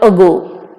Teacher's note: It is produced somewhere when the central part of the tongue is raised to a height just below the half closed position and the lips are unrounded. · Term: weak A